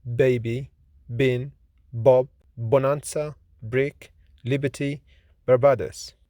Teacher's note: The consonants that we have introduced are P, which is voiceless, fortis, bilabial, plosive consonant, like in pet, pop, lip, happy, people, peculiar, hippopotamus. B is voiced, lenis, bilabial, plosive consonant